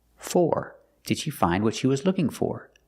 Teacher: With the question, for is at the end, so it makes the or sound.